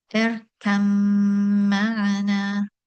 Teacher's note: So the letter ba is completely assimilated and is not pronounced. So one goes directly from the letter kaf to the letter mim. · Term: idgham